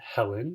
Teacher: a vowel at the beginning of a word that was supposed to be aspirated with the H sound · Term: rough breathing